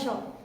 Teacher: मुख के ऊपरी छत के अगले भाग में जीभ टकराती है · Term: मूर्धा श